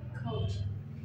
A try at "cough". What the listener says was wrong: Yeah, with an F. Cough.